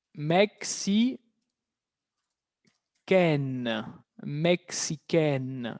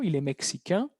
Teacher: El sonido de la N se libera.